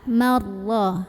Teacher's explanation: baca ra-nya tebal, pangkal lidah kita angkat, marrah. Pangkal lidah angkat tanpa mengubah posisi makhraj dari huruf ra. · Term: tafkhim